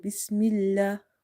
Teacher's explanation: in the word Bismillah, we say lam very light because there is a kasra before it